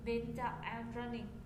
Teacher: Đạp giọng xuống một lần nữa hai tông. Và nói bằng hơi bụng. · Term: xuống giọng